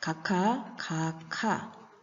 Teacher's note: 기역과 히읗이 만났습니다. 키역으로 축약되었습니다. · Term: 격음화